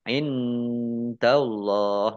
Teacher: nun sukun bertemu dengan huruf dal bacaan ikhfa dibaca samar-samar. Allahnya dibaca tebal karena harokat di depannya fathah.